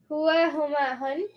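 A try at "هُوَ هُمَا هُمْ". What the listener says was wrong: No N's. Only M's. Hua huma hum. Hum.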